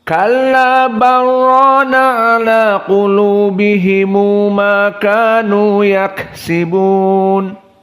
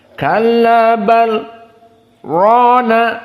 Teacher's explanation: Qiraah Wars diidghamkan lam kepada ro